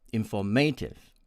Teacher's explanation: My friends from India tend to pronounce it as informative, with stress on the third syllable, may. And my American friends pronounce it as informative, with the stress on the second syllable, for, F-O-R, informative.